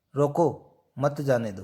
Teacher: तो इसमें रोको पे बालाघात है